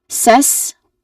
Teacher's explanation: there's a short e vowel sound here, and then it is sandwiched with a hissing sound before and after it